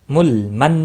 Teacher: نون مشدد پر غنہ ہوگا، لام ساکن کو ہلانا نہیں۔